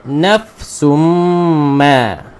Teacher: Okey, nafsum ma dua harakat, kemudian ma panjangkan, apa dia? Mad jaiz munfasil ma.